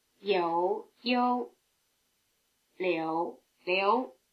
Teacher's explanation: you hear something approaching a simple U sound after the semivowel in the first and second tone names